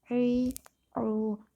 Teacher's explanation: اور عین کی آواز آتی ہے ای او، حلق سے آتی ہے